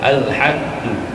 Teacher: dan mim mati kita putuskan di bibir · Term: izhar syafawi